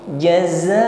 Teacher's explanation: Jaza, kita panjangkan dua alif karena ada mat tabi'i bertemu hamzah, mat wajib mutasil, kita panjangkan dua alif empat harakat. Jaza'au, tanwin bertemu wawu idgham bi gunna itmamu syafatain, himpun bibir ke depan dan dengungkan